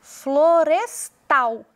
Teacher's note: é a última sílaba tônica Então essa palavra é oxítona